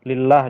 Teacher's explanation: lafaz Allah dibaca tarkik, dibaca tipis karena sebelumnya atau didahului oleh baris kasroh ya atau tanda kasroh.